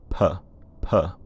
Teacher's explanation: voiceless aspirated which means that the voice box starts buzzing a while after the release p p you can hear that there's a few milliseconds of